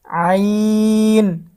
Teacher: আইনের উচ্চারণটাও আমাদেরকে গলাটা একটু চাপ দিয়ে তারপরে আইনের উচ্চারণটা করতে হবে